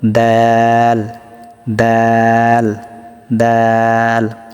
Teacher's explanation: জিহ্বার আগা সামনের উপরে 2 দাঁতের গোড়ার সঙ্গে লাগিয়ে ত দাল তা উচ্চারিত হয়